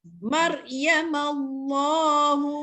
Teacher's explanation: Hum tu kena dengar sebab mim bersabdu iaitu hukumnya wajib gunnah. Ya, wajib kita baca gunnah.